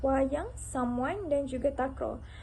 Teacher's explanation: huruf W ini berlaku kerana perhampiran bibir dan di sekitar wilayah velar · Kemudian pita suara bergetar dan lidah akan bergerak pantas untuk menghasilkan vokal tengah W. Oleh itu, bunyi yang dihasilkan ialah konsonan separuh vokal dua bibir bersuara W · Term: geluncuran labial vela bersuara